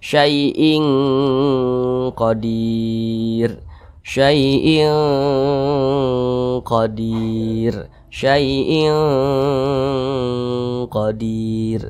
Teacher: didengungkan itu ditahan suaranya kira-kira dua harakat ee dua harakat atau kira-kira dua katukan nah kemudian di sini · Nah, tapi nunnya jauh dengan huruf qaf makharijul hurufnya. Jadi dia dengungnya itu lebih dominan, lebih tinggi begitu. Jadi lebih cenderung berbunyi eng. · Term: ikhfa Hakiki ab'ad, ikhfa hakiki ab'ad